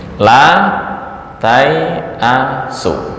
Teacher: bacanya adalah la tai'asu, alifnya terbuang